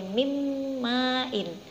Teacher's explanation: nunnya mati, nun sukun, hurufnya masuk ke dalam mim, bukan min ya bacanya tapi mim ma'in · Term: idgham bihuna